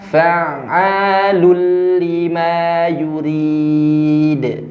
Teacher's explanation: Harusnya lun karena di sini lamnya bertasydid. Jadi L-nya N-nya nggak ada, jadi ke L. Jadi baca lulli.